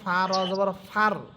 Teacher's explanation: ফা র জবর ফা আপনি মুখ ভরে উচ্চারণ করবেন ঠিক আছে ফা কিন্তু মোটা হবে না মোটা হবে র হরফটা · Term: র হরফটা মোটা